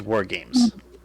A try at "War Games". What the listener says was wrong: War Games. You need to put emphasis on it when you say it, dude.